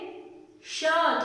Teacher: थोड़ा सा गले से और मूर्धा से आवाज आती, थोड़ा अंदर की तरफ से आवाज आती